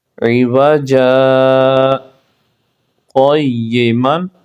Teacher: الف مدہ کرنا ہے اور سکتہ کریں گے اور آگے پڑھیں گے